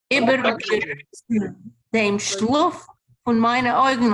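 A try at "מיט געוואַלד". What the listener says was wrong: No, it's mit Gewalt. Mit Gewalt.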